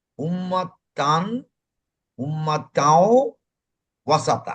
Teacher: নাসিকা মূল হইতে যে আওয়াজে হরফ উচ্চারিত হয় তাহাকে গুণনা বলে। নাসিকার মধ্য হইতে চন্দ্রবিন্দুর আওয়াজে এক আলিফ টান পরিমাণ গুণনা পড়া হয়।